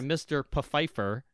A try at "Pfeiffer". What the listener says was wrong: Pfeiffer. The P is not silent.